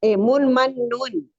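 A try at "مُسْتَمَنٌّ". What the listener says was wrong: Ya, bagus.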